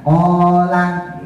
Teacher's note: kolnya yang panjang, langnya yang pendek